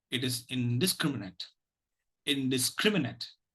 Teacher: the last syllable is not stressed. It has a weak vowel, schwa, and so it need not be pronounced as net.